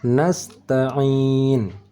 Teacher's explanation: ini huruf Ain cara bacanya bukan di hidung dan bukan di Pangkal tetapi di tengah kerongkongan